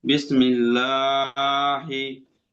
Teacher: হ্যাঁ, লামের উপরে খাড়া জবর আছে, খাড়া জবরটি আলিমুদ্দার সমতুল্য। আলিমুদ্দাকে এক আলি পরিমাণ টান দিয়ে পড়তে হবে